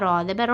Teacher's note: مطہرۃ بأیدی سفرۃ، سین زبر سا، فا زبر فا، را زبر را، موٹی آواز ہے نا، را کے پر زبر ہے کی وجہ سے موٹی آواز پڑھنا را کو